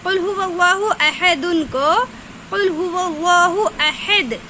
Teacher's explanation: دو پیش کی تنوین پہ جب وقف کیا جاتا ہے، یعنی دو پیش کی تنوین والے حرف کے بعد جب فوراً آیت آ جاتی ہے تو دو پیش کی تنوین کو جزم سے بدل کر پڑھتے ہیں